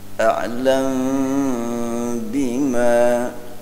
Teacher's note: mim sakinah menghadapi ba tidak penuh iklab, tidak penuh mim, tapi sedikit diringankan ya.